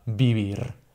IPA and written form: biβ̞ir (vivir)